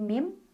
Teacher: iqlab karena ada nun sukun bertemu dengan huruf ba cara bacanya bunyi nun sukun diganti dengan bunyi mim sukun sambil dengung Jadi bukan Min tapi mim sambil nahan mim ba'di di M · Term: iklab